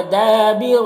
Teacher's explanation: دال میں الف مدہ ہے، ایک الف کے برابر کھینچیں گے، را کو پر پڑھیں گے، زبر ہے۔